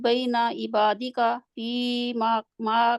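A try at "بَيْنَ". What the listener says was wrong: Okay, بینا نہیں ہے، بینا چھوٹا ہے، بینا.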